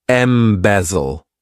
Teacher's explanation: This verb has three syllables and the stress is on that second syllable